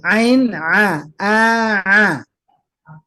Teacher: Keluarnya huruf ain dan ha ini bagian dari tengah tenggorokan kita